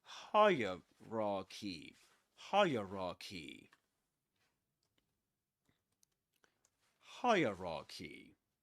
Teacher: we say hierarchy, and the accented syllable is the first one, this one, higher.